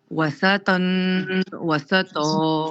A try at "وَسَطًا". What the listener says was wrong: سین کو باریک کیجیے. آپ کی زبان سامنے والے دانت پہ لگ رہی ہے.